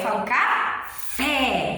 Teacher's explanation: a gente já pronuncia o fé com mais força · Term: sílaba tônica